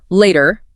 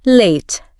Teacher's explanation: one of the defining features is the absence of that strong R sound at the end of words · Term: non-rhotic